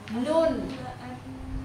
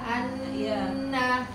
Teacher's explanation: Kemudian berikutnya sama makhrajnya, cuma dia lebih turun, lebih ke depan sedikit, lebih dekat ke gigi. Yaitu ujung lidah rapat ke gusi atas, lebih turun dari makhraj lam.